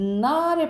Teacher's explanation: 나를 발음해보면 이 혀 끝이랑 윗잇몸이 닿거든요. 그래서 여기서 나는 소리가 잇몸 소리예요. 잇몸 소리는 니은 계열을 생각하시면 돼요.